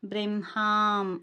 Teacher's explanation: అలాగనే హామ్ అన్నప్పుడు పక్కన సున్నా ఉంది కదా అనుస్వారము, శ్వాసతో కలిపి సాగదీయాలి.